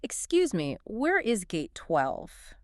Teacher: Notice how the stress falls naturally on the crucial information. The gate number.